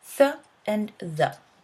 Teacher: We produce these sounds by placing our tongue at the upper teeth or between the upper and lower teeth. This is why they're also sometimes called interdental, as in between the teeth. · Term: dental sounds